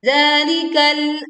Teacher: Kemudian kita menekan huruf lam pada lafaz zalikal, sebagian suara tertahan di ujung lidah.